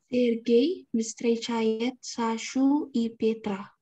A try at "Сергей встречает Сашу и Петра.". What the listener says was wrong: Сашу и Петра, хорошо.